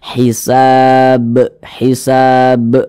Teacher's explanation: karena huruf ba ini disukunkan, nah, maka cara bacanya itu dipantulkan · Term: qalqalah kubra